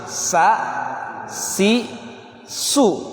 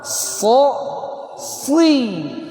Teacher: So ini tebal, nanti ngaruh sama kasroh. Kalau sa tipis, sa, si, su. Tapi kalau so tebal, so, si.